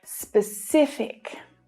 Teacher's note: The stress is on the middle syllable here.